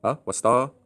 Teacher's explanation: So there's the w, and then s, and there's no vowel on the s. So was, and then a t, wastaq.